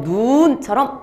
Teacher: 예를 들면 우리 신체에 있는 눈, 발음하면 그냥 눈이야, 눈. 근데 하늘에서 내리는 눈은 방금 읽은 것처럼 눈처럼 길게 읽어. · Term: 말의 길이